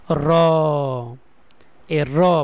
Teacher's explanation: তালুর সাথে কয়েকবার মানে আঘাত করে এইজন্য এটাকে বলা হয় কম্পিত ধ্বনি